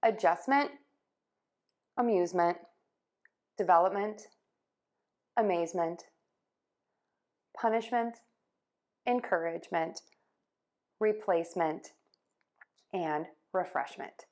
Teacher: You just want that to be an unstressed, shorter vowel sound at the end of the word in that suffix